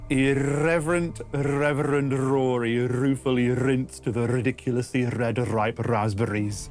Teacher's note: there's a lot of rolled R's, which I had to really drill to get my mouth around it. And that actually, I made up like a specific tongue twister to prep myself before recording.